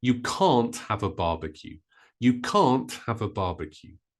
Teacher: with can't because it's negative we stress it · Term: word stress